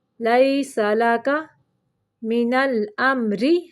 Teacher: را کو باریک پڑھنا ہے